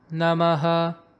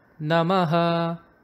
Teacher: the intonation for the namaha is a flat pitch